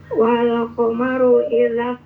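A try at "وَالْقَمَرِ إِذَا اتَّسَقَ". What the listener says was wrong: wal qamari idza tasaq Jangan komaru, komari.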